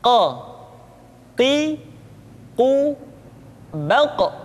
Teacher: Huruf qaf diucapkan dengan cara menyentuhkan pangkal lidah kita dengan langit-langit bagian belakang.